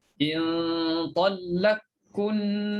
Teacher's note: Qaf tu jadi izhar. Kalau nak idgham, in talaqkunna, masukkan qaf dalam kaf.